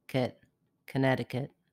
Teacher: connecticut is a flap it sounds more like a d connecticut the last syllable is short and reduced · The last syllable is short and reduced, kit, Connecticut.